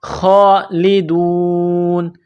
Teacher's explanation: خا کو موٹا کرنا ہے، کڑا زبر ہے، ایک الف کے برابر کھینچنا ہے، خالدون. دال کو واو کے ساتھ پلس کرنا ہے.